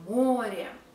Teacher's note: o is stressed, we pronounce it o